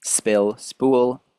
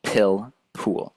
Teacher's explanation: when you say spill or spool, you might notice that there is a much less strong burst of air than when you say pill or pool